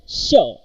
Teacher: the tip of the tongue touches to the alveolar ridge and the body of the tongue approaches to the hard palate. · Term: palatoalveolar